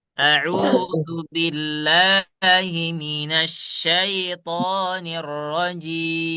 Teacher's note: Saya ingatkan huruf jim itu tidak boleh apa? Tidak boleh hams. Dia sifatnya adalah jahar.